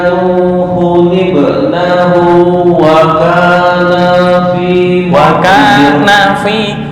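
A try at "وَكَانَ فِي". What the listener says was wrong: yang akhir-akhir ini lo pendek dipendekin ya. pendek. Karena kalau ini dipanjangin ntar jadi dua orang, berubah artinya.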